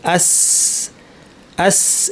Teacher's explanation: এই সদটাকে পাতলা করে দিলে, যদি জিব্বাটা আমরা না তুলি উপরে, আওয়াজটাকে ট্র্যাপ না করি, সিন হয়ে যাবে।